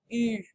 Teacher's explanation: It's like you're saying E on the inside of your mouth, but you're making your mouth in the shape of an U. U. Practice that nasal sound.